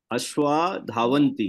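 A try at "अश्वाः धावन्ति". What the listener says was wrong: Ashwaha. You have to pronounce that hakaram. Ashwaha. No, you are not pronouncing the aha correctly. Ashwaha dhavanti. You have to add that ha. Ashwaha dhavanti.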